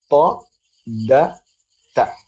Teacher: നാവിന്റെ അറ്റം മേലെ മുൻപല്ലുകളുടെ റൂട്ടിൽ ചെന്ന് തട്ടുമ്പോൾ ഉണ്ടാകുന്ന ദ